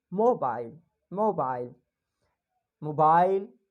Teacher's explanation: they are just rising the sound of mo and then falling the voice of bile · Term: intonation